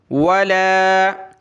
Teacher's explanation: لام کے اوپر یہ کھڑا زبر ہے تو ایک الف کی لمٹ میں اس کو ہم کھینچیں گے